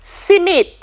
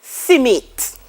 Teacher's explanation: insertion of a vowel between the consonants sm and sn